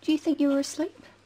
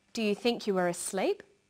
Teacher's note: her voice goes up at the end of the sentence we call this a rising tone